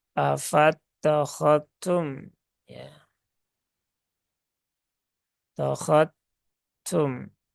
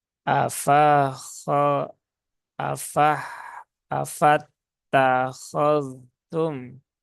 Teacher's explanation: zal sukun bertemu dengan tak itu dia tidak terjadi idgham sehingga di pertemuan ini ya ini dibaca dengan izhar